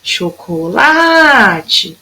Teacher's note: Então, o lá foi a que durou mais tempo. Então, o lá é minha sílaba tônica.